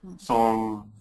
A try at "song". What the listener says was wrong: No, you moved your jaw. Song. Get the AW.